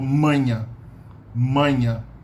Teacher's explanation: my tongue doesn't touch my palate or my teeth in any way shape or form